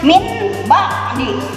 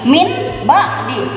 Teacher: Yang diganti adalah nun matinya atau tanwinnya ke huruf mim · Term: iqlab